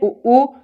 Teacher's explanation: उ उच्चारण कहां से होता है, ओष्ठ से